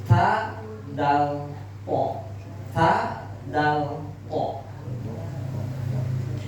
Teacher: Kalau ca berarti tidak pas itu. Karena huruf ta makhrajnya ujung lidah menempel ke gusi gigi seri atas.